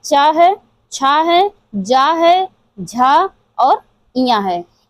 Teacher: चा वर्ग जो हमारा उच्चारित होता है वो तालव्य से होता है। तालव्य या तालु भी कहते हैं इसे।